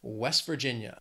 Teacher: this state has four syllables but again the stress in that second word that Virginia is on that second syllable West Virginia if you say it quickly you really almost don't